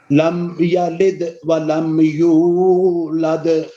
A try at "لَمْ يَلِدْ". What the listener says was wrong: لم یا لید نہیں کہنا. لید اور ہوتے ہیں. یہ لید ہے لید. لم یا لید بولیے. دال میں قلقلہ بھی ہے. لم یلد ولم یولد. لم میں میم میں آواز ہلے نہیں.